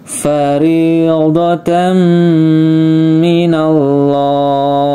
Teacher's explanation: lamnya dibaca tebal, huruf sebelumnya fathah, maka dibaca minallah